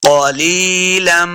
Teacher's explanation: اس قاف کو موٹا پڑھنا ہے، قاف حروف مستعلیہ سے ہے۔ قولی لام سے یا لی، یہ یا مد ہے، اس کو دو حرکات لمبا کر کے پڑھنا ہے۔